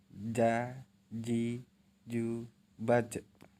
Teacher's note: Dilafalkan dengan menyentuhkan tengah lidah ke daerah langit-langit. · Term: huruf Ja